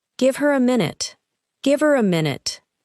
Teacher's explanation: Pronouns becoming very weak. Words like him, her, them, and it may almost disappear inside a sentence.